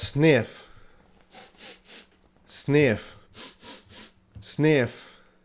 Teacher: voiceless there's no vibration with the F sound